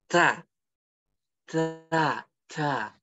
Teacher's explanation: Ta ini dia masuk sifat hames. Jadi dia ada nafas yang keluar dari mulut, bukan dari kuping, ya.